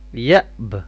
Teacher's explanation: اس کے اوپر بھی قلقلہ کا ساؤنڈ ہوگا، تو با کی آواز یہاں پہ آنی چاہیے